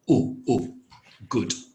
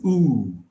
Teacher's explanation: It's an oo. So instead of an u, it's oo, and it's longer.